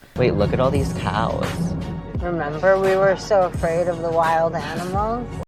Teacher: speaks in the most insane vocal fry you've ever heard in your entire life